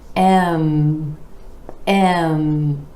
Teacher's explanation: bringing the lips together for the M consonant with air flowing out through the nose.